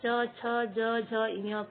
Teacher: च वर्ग तालु से बोले जाते हैं